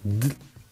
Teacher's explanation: Elle va s'écraser là-haut là. Un petit peu derrière les incisives, là, un peu entre le palais et le haut des incisives. Et une fois qu'elle est là, elle est dans la bonne position pour être lancée et se mettre à vibrer. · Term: R roulé